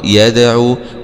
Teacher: والله ياء فتحة ياء دال سكون مع القلقلة يدا عين ضمعوا يدعوا.